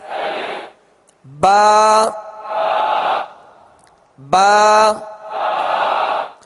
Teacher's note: با کا جو مخرج ہے دونوں ہونٹوں کے تر حصے سے یہ ادا ہوتا ہے. دونوں ہونٹوں کے تر حصے سے ادا ہوتا ہے.